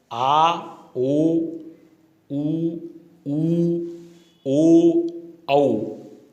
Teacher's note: तो पश्च स्वर अगला भेद है पश्च स्वर। उच्चारण के समय जीभ थोड़ी पीछे सरक जाती है, इसलिए इन्हें पश्च स्वर कहते हैं।